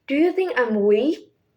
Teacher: It's the voice rise at the end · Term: rising intonation